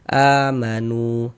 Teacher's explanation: Ya, nu dibaca panjang. Mad thobi'i panjang dua harakat. · Maka huruf yang memiliki tanda baca dhammah dibaca panjang. Sehingga nu dibaca panjang. Mad tabi'i panjang 2 harokat.